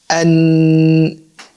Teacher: If we pronounce N, the air has no way to go out of your mouth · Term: articulation of noon